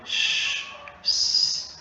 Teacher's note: les sons comme ch, s, vous allez constater que ça ne vibre pas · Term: voiceless